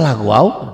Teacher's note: Oh waw itu idgham biguna jadi lagwau.